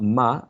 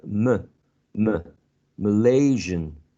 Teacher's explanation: Very lax mid-central vowel sound. Always remember that it's very lax, okay? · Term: schwa